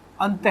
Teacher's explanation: इस विसर्ग में जो आवाज आती है वो ह की आती है